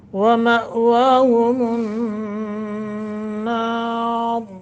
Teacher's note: حمزہ ساکن ہے، جھٹکا دے کر پڑھیں گے ، ہم النار یا غنہ کریں گے، را کو موٹا، وقف